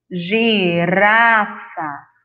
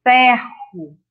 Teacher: Só que em girafa, o som do R é vibrante. Aí você vai perceber na boca, ó, girafa.